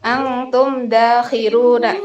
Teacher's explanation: termasuk bacaan idhar syafawi karena ada mim sukun bertemu dengan da. Cara bacanya jelas.